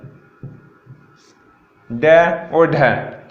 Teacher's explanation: इनके उच्चारण में जीभ ऊपर उठकर मूर्धा को स्पर्श करती है। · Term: उत्क्षिप्त व्यंजन